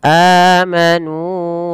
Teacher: Mad badal teman-teman terjadi ketika adanya huruf hamzah yang bertemu dengan huruf mad. Nah, pada kali ini adanya hamzah yang bertemu dengan huruf mad berupa alif teman. Nah, maka ketika membacanya panjangkan ia dua harakat.